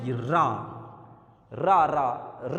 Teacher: तालू से थोड़ा आगे जाकर के जीभ हमारी दांत के ऊपर टकराती है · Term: मूर्धा